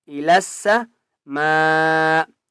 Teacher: ثم استوى، ای لس، لام سین زبر لس، لام کو سین کے ساتھ ملائیں گے اور مضبوطی کے ساتھ پڑھیں گے۔ السماء، میم کے اوپر بڑی مد ہے اس لیے پانچ الف کی مقدار کھینچ کر پڑھیں گے